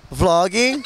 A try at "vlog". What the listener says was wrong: Não, não é vlogging, não tem ING, vlogging. Vlog.